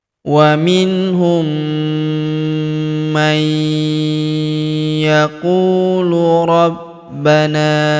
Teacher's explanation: Waminhum mai huruf nun sukun bertemu huruf ya berharakat tasydid. Maka nun sukunnya melebur ke huruf ya yang berharakat tasydid. Kita tahan dan kita tekan serta kita dengungkan dua sampai 3 harakat. · Wa minhum man yaqulu rabbana, huruf ku kita panjangkan 2 harokat karena waw sukun